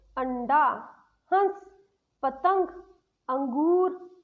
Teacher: इसका प्रयोग बिंदु लगाकर करते हैं, जैसे अंडा, हंस, पतंग, अंगूर आदि। जब हम अनुस्वार का प्रयोग करते हैं तो इसमें नाक से आवाज आती है।